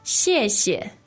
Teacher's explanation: 谢 the 4th tone, but the second 谢 is neutral tone. Okay, so it kind of seems like the first one is stronger.